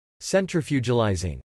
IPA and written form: sɛntɹəfjuɡəlɪzɪŋ (Centrifugalising)